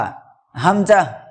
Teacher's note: হালাকের বা কণ্ঠনালীর শুরু হইতে উচ্চারিত হয় হামজা